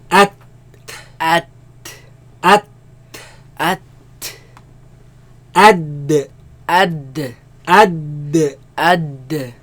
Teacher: They all come from front flat part of the tongue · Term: taraf-ul-lisan